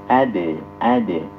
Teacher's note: Ad ini dibaca qalqalah. Karena terletak di tengah maka dia dihukumi qalqalah kecil atau sugro ya. Ad. Jadi jangan sampai pantulannya itu tawallud atau ada nabrah ad.